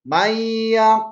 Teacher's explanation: Karena si nun dimasukkan ke dalam ya, maka seolah-olah dibaca si nun ini tidak ada. Mayyaqulu, milla, mayya. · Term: idgham bigunnah